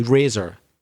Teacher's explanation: in Belfast, like America and a few other places, we say the R more